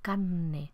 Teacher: esa ere se debilita y se aspira y la n que le sigue la consonante nasal siguiente se refuerza carne en lugar de carne son articulaciones propias de la oralidad